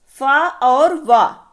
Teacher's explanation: दंतोष्ठ से उच्चारित होने वाले व्यंजन है